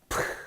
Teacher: aspiration, 기식성 있죠? 자, 바람 새는 소리가 나잖아요.